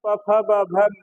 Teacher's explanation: प वर्ग के वर्णों का उच्चारण स्थान ओष्ठ है, तो मैं का उच्चारण स्थान भी ओष्ठ हुआ, और ओष्ठ के साथ साथ यहाँ नासिका भी होती है, यानी मैं का उच्चारण स्थान ओष्ठ और नासिका है।